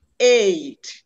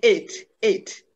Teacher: many Nigerian learners of English, especially the Igbo learners, will realize this diphthong as eh, eh, instead of having that glide